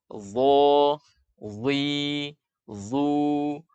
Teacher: Dho. Huruf dho makhrajnya ujung lidah bertemu ujung gigi seri depan atas.